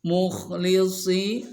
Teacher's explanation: Nah, kha ini tebal, ada di ujung tenggorokan.